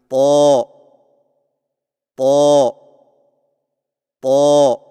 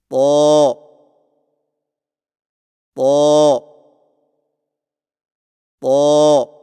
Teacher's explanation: طا کی ادائیگی میں زبان کی نوک کو سامنے والے اوپر کے دو دانتوں کی جڑ سے لگا کر اور زبان کے پچھلے حصے کو تالو کی طرف بلند کرتے ہوئے موٹی آواز میں پڑھیں